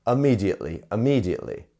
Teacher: notice how I'm not pronouncing the I as a i it's as an uh